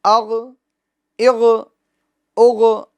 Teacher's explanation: یہ غین کے سکون میں جنبش نہیں دینی, یعنی آواز کو لوٹانا نہیں ہے, ٹھیک ہے. آواز اس کے مخرج میں رک جائے گی, سکون کامل طور پر جمع طور پر ادا ہوگا. اغ اغ اغ, آواز لوٹے گی نہیں.